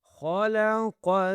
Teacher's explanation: خلق خا قاف دونوں کو موٹا کرنا ہے، ٹھیک ہے، خا اور قاف کو لام کے ساتھ ملانا ہے، کیونکہ لام کے اوپر سکون کا سائن ہے تو پچھلا والا لفظ کنیکٹ ہوگا، ٹھیک ہے۔